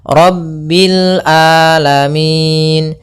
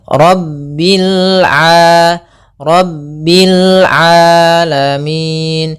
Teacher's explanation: Kemudian di sini huruf ain. Hati-hati jangan sampai merubah huruf ainnya menjadi hamzah. Banyak yang terjadi kesalahan dalam pelafalannya yaitu mengganti dengan alif atau hamzah.